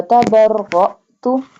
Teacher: apply a sudden break here because hamza has nothing on it